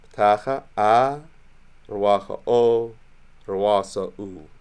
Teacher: ptacha is an open back-rounded vowel and the ruas is closed back-rounded. It's saying open in terms of what's happening with the mouth as you're making that vowel sound, because a vowel is when you're just articulating a sound rather than making a consonant, right?